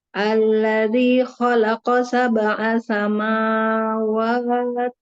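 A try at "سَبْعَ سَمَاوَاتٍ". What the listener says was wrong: Kepanjangan. Satu ayunan kan dua harokat itu bacanya kan satu ayunan. Sama wa gitu. Sama wa. Satu kali ayunan kan satu ayunan gitu. Cuman set gitu kan. Dari sini set gitu. Tadi agak kepanjangan sedikit.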